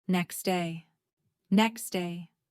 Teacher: The t is dropped. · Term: Dropping sounds